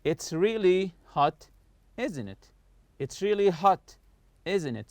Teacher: falling intonation, meaning the voice goes down when we know the answer and are just asking for agreement. It means that when I know the answer, I'm just asking for agreement.